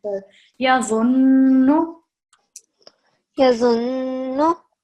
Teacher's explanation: whenever we see the noon with the shadda sign, we're going to pause a little bit for 2 seconds and also produce the nasal sound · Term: noon mushaddad